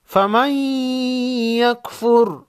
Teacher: نون ساکن کے بعد حروف یرملون میں سے یا ہے، ادغام مع غنہ ہوگا ، یعنی غنہ کے ساتھ ادغام ہوگا، فمن یکفر بالطاغوت، طا